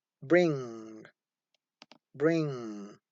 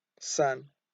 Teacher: n becomes velar, that is pronounced when it occurs before the oral stop sounds k and g. This is because the sounds k and g are velar.